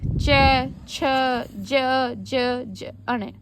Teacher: इनकी आवाज कहाँ से आती है? तालु से। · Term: चै वर्ग